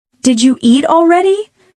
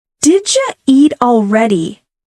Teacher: Did you becomes didja.